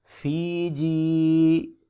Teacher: دونوں یاؤں کے اوپر جو ہے مدہ ہو رہا ہے لہٰذا یہاں پہ مدہ کریں گے، ایک الف کے برابر لمبا کریں گے